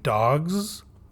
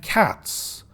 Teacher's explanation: we say dogs with a voiced z and cats with a voiceless s